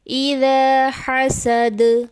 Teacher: دال حرف قلقلہ میں سے ہے، حالت وقف میں دال کی آواز پلٹ کر واپس آئے گی